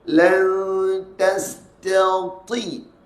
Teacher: Angkat pangkal lidah huruf ta tu. Tebalkan bunyi dia.